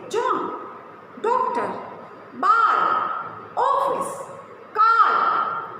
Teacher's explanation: यह आ और ओ के बीच की ध्वनि है। इसे अंग्रेजी के शब्दों में लगाया जाता है, जैसे जॉन, डॉक्टर, बाल, ऑफिस, कार।